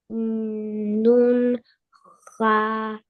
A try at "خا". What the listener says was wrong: Kha not Kho. Bold it.